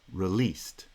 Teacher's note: The word released has stress on the second syllable. Released. The r is an unstressed syllable, and as a result, it kind of joins the previous foot.